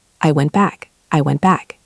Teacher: The T in went is followed by the B in back. That T is going to disappear.